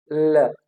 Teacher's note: अब लेटरल का क्या मतलब होता है, lateral means for example the tip of the tongue will be in contact with your alveolar ridge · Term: लेटरल अप्रोक्सीमेंट